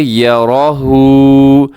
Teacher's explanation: یا بھی باریک ہے، را موٹا پڑا جائے گا، ہا الٹا پیش جو ہے اس کو باریک پڑھنا ہے